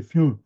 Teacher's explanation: Et c'est très, très profondément nasalisé, et il le cultive. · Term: la nasalisation